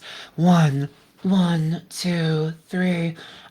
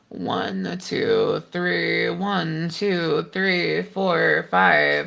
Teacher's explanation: I'm just not getting the kind of resistance at the glottis that I'm used to getting. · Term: breathiness